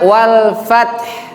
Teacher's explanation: Lalu yang berikutnya wal fath, ada desisan ha di situ.